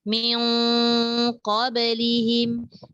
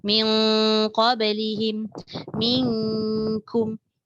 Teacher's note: hampir keseluruhan suara masuk ke rongga hidung atas. Dan hanya sedikit sahaja suara yang keluar daripada mulut. Sebab tu masa awal-awal tadi saya terangkan bila nun atau tanwin bertemu qaf atau kaf, dia punya bunyi pergi belakang. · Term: dengung